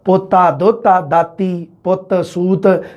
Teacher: ਪੋਤਰਾ ਦੋਤਰਾ ਦਾਤਰੀ ਪੁੱਤਰ ਸੂਤਰ ਐਵੇਂ ਬੋਲਿਆ ਜਾਂਦਾ ਮਾਝੀ ਦੇ ਵਿੱਚ ਪਰ ਮਲਵਾਈ ਤੇ ਦੁਆਬੀ ਦੋਨਾਂ ਦੇ ਵਿੱਚ ਪੋਤਾ ਦੋਤਾ ਦਾਤੀ ਪੁੱਤ ਸੂਤ ਰੈ ਦਾ ਲੋਪ ਹੈ